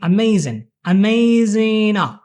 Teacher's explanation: you always let the G drop because it's often in the way